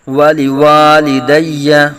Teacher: دوسرے واو کو لمبا کریں گے ایک الف تک